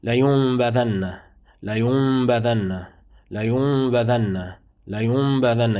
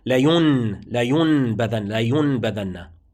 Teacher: You see, the noon is converted into a meme. You no longer hear the word, the letter noon. · the noon is converted into a meme, and it is a concealed meme, ikhfa shafawi. You do an ikhfa shafawi when you pronounce it or when you recite it, so it becomes, or you pronounce it or recite it as such, as follows. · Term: Iqlāb